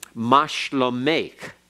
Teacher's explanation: It's almost like the cheth. It's a K sound, but it's not real hard, and it's softened. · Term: softer K